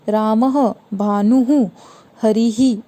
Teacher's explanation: विसर्ग स्वरों के आगे आने वाले बिंदुओं को विसर्ग कहा जाता है। विसर्ग का उच्चारण आधे ह की तरह किया जाता है।